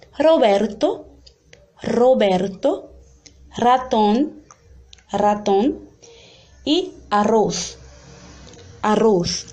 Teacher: E quando a gente for perceber mais lá na frente, quando começar a estudar as palavras, vai ver que esse som é pronunciado assim, um R mais vibrante, quando está no começo de palavras ou quando tem dois R's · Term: vibrante múltiplo